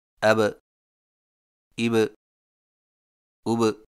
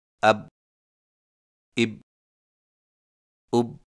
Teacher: حرف با پر جزم آئے تو دونوں ہونٹ آپس میں مل کر الگ ہو جاتے ہیں اور قلقلہ ہوتا ہے